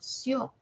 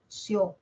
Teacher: De cerrada se abre, abierta, sio. Y se escucha más la o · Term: diptongo